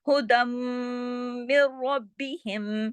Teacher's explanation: یہ ہے کہ اندر ایک میم اور بھی چھپا ہوا ہے، جب 2 میم ہوتے ہیں تو غنہ بڑا ہو جاتا ہے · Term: اکمل غنہ